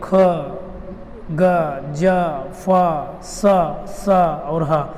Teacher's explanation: जो मुख का द्वार होता है वो बहुत ही सकरा हो जाता है और सी की आवाज़ होती है। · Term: संघर्षी व्यंजन